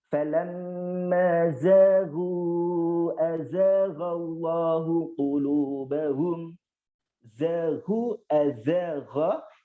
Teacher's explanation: makhraj jadi huruf za ini melibatkan dari ujung lidah kita dengan gigi seri bagian bawah